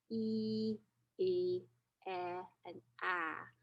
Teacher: your jaw moves from a higher position to a much lower position from e to ah